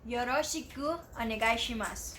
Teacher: you may notice another vowel devoicing at onegaishimasu. So try to silence the letter U.